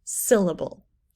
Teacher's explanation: the first syllable in syllable is said more loudly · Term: stressed